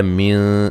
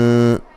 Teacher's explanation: من نون ساکن کا یہاں اخفا ہوگا باریک